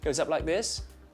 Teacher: Australians tend to have a high rising terminal that's a technical term for sentences that go up at the end